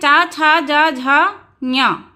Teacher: जब हम बोलते हैं च छ ज झ ञ तो हमारी जीवा जहा जाकर टकराती है उसे हम कहते हैं तालू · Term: तालव्य